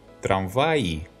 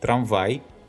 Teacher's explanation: Please note, the pronunciation of E and I краткое after vowels is not the same. The E has a longer sound.